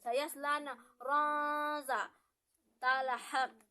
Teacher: Di sana ada tanwin bertemu dengan huruf za, maka dibaca dengan cara yang menyamarkan. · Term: ikfa